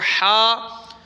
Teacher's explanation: وہ گلے سے نکلتا ہے، ہلکی جیسے گلا صاف کرتے